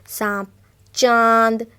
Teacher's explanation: यहाँ पे हम चंद्रबिंदु की भी चर्चा करेंगे जो अनुनासिक कहलाते हैं एवं स्वर के साथ इनका प्रयोग होता है एवं इनका उच्चारण करते समय हमारे मुख और नाक दोनों से हवा निकलती है